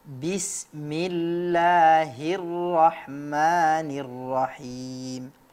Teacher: surat al-baqarah 183 dan 184 pada pelafalan kasrah kurang tepat ya jangan kita mengucapkan kasrah itu seperti huruf e